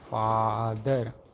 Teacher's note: We next encounter a back low lax unrounded wow represented by the symbol a.